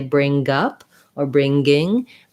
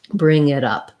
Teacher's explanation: i go right from my ng gliding into the next vowel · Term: ng sound